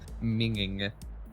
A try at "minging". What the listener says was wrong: No! I taught you how to say it! There's only one G!